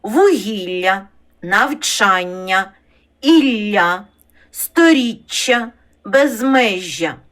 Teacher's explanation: подовжені м'які й пом'якшені приголосні між двома голосними